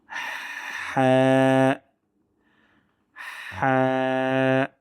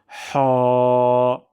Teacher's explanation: সাউন্ডটা কিন্তু হা হবে না। গলার মাঝখান থেকে বাতাস বের হবে। অন্যথায় আরেকটি হরফ আছে, সেটার সাথে কিন্তু মিলে যাবে।